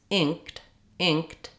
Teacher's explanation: where you're not really letting much air out of that K and you're doing what's called an unreleased K